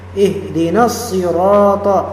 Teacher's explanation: Berarti langsung harakat atau huruf sebelumnya harakatnya melebur ke harakat sirat. Maka dibaca ihdinasirat langsung menyambungkan semuanya. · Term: alif lam syamsiyah